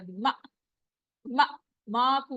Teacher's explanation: हमजा के ऊपर सुकून हो तो क्या होता है, झटके की आवाज आती है। मा, मा, माकूल नहीं पढ़ेंगे इसको, माकूल, और वाव मद हो रहा है, ठीक है, वहां पर हम रुकेंगे।